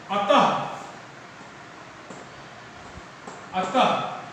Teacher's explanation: इसका उच्चारण जो होता है बेटा वो मूलतः ह के रूप में होता है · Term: विसर्ग